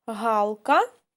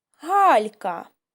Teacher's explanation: буква Л позначає твердий приголосний звук а дві букви л і м'який знак робять М'який приголосний ль ось дітки для чого нам потрібен м'який знак а зараз